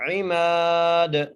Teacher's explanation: میم کو ایک الف مقدار کھینچ کے پڑھنا ہے، عماد، دال پہ قلقلہ کریں گے، ٹھیک ہے جی۔